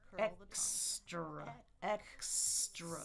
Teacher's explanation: So my regular R is what we call retroflex. So my tongue tip is just going to curl